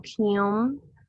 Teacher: So here it has like an NH, but it's kind of like in the back of your throat, kind of like at the end of the word, like ing, like singing. it's that ing sound, so kyum.